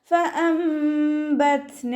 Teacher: നൂൻ സാക്കിനയ്ക്ക് ശേഷം ബ വന്നു. നൂൻ സാക്കിനയെ മീമാക്കി മാറ്റിമറിച്ച് ഒന്നയോടുകൂടി ഒതുക്കിക്കൊടുക്കുക കേട്ടോ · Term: ഇഖ്ലാബാണ്